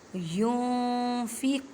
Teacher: युनफ़िक़ून, यूँ, अब देखिए नून साकिन है और नून साकिन के बाद फ़ा आ गई और फ़ा हरूफ़ इख्फ़ा में से है, यहाँ पे इख्फ़ा का कायदा करेंगे। मीन्स के नून साकिन की आवाज़ को छुपाना है एक अलिफ की मिक़दार में। युन नहीं कहना, युनफ़िक़ून।